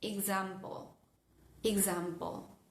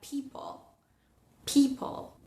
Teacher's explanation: entre la P y la L, al final de la palabra, aparecería como una especie de sonido accesorio